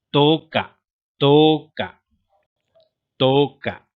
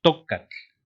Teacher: Ahí se escucha claramente que es una vocal larga, la O, ¿no? O sea, to.